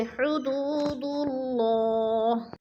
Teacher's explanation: اللہ سے پہلے لفظ دال کے اوپر پیش ہے تو اللہ کو پر کر کے پڑھیں گے